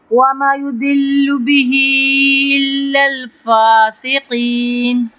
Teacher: ضاد پہ ہم تفخیم کریں گے، قاف پہ تفخیم کریں گے اور اس کو لمبا کر کے پڑھیں گے